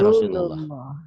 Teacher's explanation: Lafaz Allah dibaca tafkhim tebal berbunyi O Allah seperti bunyi O bila didahului oleh huruf yang berbaris patah atau domah.